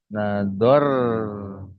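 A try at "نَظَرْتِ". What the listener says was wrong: nador ti. Tambahannya ti ini. Nador ti tambah.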